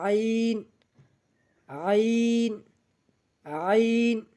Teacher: এরপর আইন, আইন গলা চাপিয়ে ধরে আওয়াজ করতে হবে। তো আইন হলকের মধ্যখান হইতে গলা চেপে ধরে আইন, আইন, আইন।